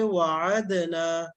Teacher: یہاں دال پڑھیں گے کیونکہ دال کے بعد تا نہیں ہے بلکہ نون ہے، تو یہاں پڑھیں گے وعدنا.